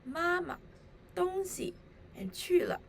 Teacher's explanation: For example, in the phrases 妈妈, 东西, and 去了, the second syllables of the 3 respective phrases are short and soft. The second syllables have a neutral tone.